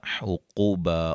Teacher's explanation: دو زبر کو جو ہے وہ وقف کی صورت میں الف مدہ میں چینج کر دیں گے